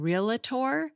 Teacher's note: That a you're hearing in real-a-tor comes from epenthesis.